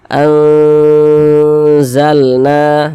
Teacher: bacanya kita samarkan kita dengungkan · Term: ikhfa Hakiki